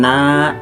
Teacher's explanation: Kemudian na, di sini ada mad asli atau mad tabi'i karena huruf nun berharakat fathah bertemu dengan alif, dibaca panjang 2 harakat